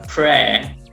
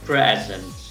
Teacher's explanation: esta es la primera sílaba, pre, que se hace con esta E bien abierta, pre, y la segunda sílaba queda sin acentuar, por lo cual uso una schwa